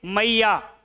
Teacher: मैया जब बोलेंगे तो या में कितना लंबा सा धुन चलता रहता है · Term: प्लुत स्वर